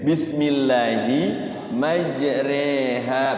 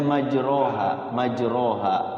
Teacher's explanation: fathah tidak kasrah tidak tengah-tengah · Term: imalah